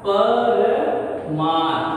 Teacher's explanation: ह्रस्व अ और ह्रस्व अ थे, दोनों मिलकर दीर्घ आ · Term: दीर्घ संधि